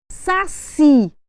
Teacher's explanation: Eu tenho um acento tônico, mas não tenho um acento gráfico. A minha sílaba mais forte é a última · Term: oxítona